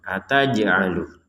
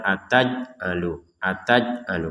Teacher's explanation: ada Jim pun kita pantulkan